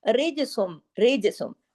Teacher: را باریک لیکن جیم پہ کلکلا ہوگا